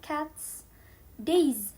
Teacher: cats with a pure s sound cats days but a little bit z sound days and horses with a iz sound horses